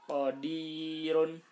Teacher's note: Qadirun. Nah, ini ro-nya harus dibaca tipis.